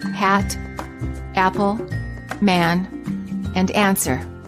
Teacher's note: the lips are open not rounded and the tongue is in the lowest position of all the front vowels the tongue is flat on the floor of the mouth [Music] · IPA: /æ/